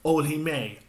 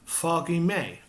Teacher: Remember, even though it's an F, we don't pronounce it.